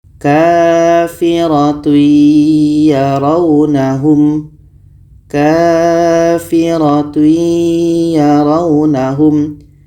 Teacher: Tanwin bertemu ya tadi adalah idgham bi gunnah. Maka harus kita masukkan tanwin ini, kita masukkan ke ya dan kita dengungkan.